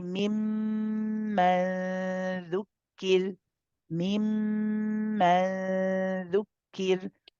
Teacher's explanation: It's a light letter. And so you go close to the makhraj of the dal, but you don't pronounce the dal until you want to pronounce the dhamma or the pesh that's on it.